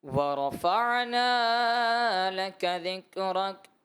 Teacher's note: نون کو آپ نے زیادہ دراز کر دیا اور را میں بھی تھوڑی کمی محسوس ہوئی.